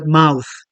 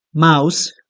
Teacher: the voiceless th sound